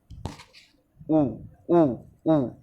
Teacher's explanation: बोल के देखो, उ ओष्ठ की सहायता से बोला जा रहा है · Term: ओष्ठ वर्ण